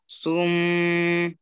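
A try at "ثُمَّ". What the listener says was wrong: সা সা এটা সুম বলবেন না সুম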